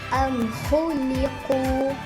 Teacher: huruf mim sukun dibaca dengan jelas apabila bertemu dengan huruf kha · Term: izhar syafawi